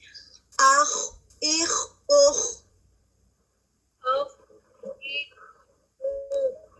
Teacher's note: صرف سمپلی خواہ کہہ کے نہیں گزر جانا, اس کے اندر جو رخاوا ہے, جو آواز کا جاری پن ہے, وہ ہونا چاہیے